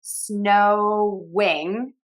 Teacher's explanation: as we move from one sound to the other, we are going to add that W sound because it's sort of connecting and it's just our mouth moving and the airflow continues out.